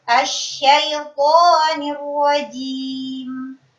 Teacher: Tidak boleh ada aliran nafas ketika mengucapkan huruf jim